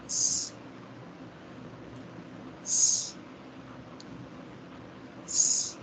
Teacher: This sound is voiceless, alveolar, sibilant, or fricative. This means that you create friction through clenched teeth by directing airflow with the tip of the tongue.